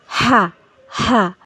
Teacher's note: হা হলকের মধ্যখান হতে উচ্চারিত হবে।